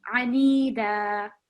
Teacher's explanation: you've got the ayn just with fatha. So you prolonged it and read it as anida, but just 1 second.